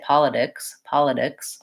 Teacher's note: You can hear it sounds strange if I say politics, politics. I'm definitely using an aspirated true T there